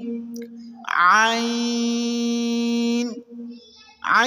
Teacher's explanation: आइन को हलक के दरमियान वाले हिस्से से अदा करेंगे।